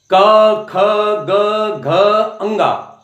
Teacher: क वर्ग को कंठ से और जुबान के पिछली वाले हिस्से को कंठ में हम टकराते हैं